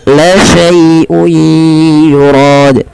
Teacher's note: Kemudian pada lafal la syai'un yurad, ya, lembutkan dalam melafalkan ya sukun yang di dalam dengan fathah karena dia ada bacaan lin, lembut di dalam melafalkannya.